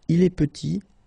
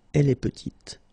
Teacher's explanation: Final T is not pronounced, and then when you add this E at the end, you get the sound T